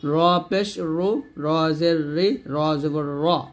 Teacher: র টা জবরের সময় রা বলা যাবে না র বলতে হবে